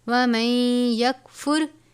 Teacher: حرف یرملون میں سے نون کو یا سے ملا دیں گے